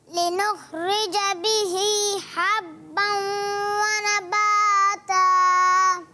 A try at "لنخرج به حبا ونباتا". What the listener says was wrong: غننے کی مقدار تھوڑی اور اچھے انداز سے بڑھا کر دوبارہ. جیسے کریں حبا، تھوڑا پکڑ لیں اس کو. حبا ونباتا.